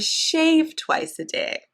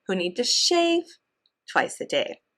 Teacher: we're stressing shave and then the phrase twice a day that tells when it happens is not stressed